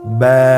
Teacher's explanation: বা হরফে টান হবে এক আলিফ টান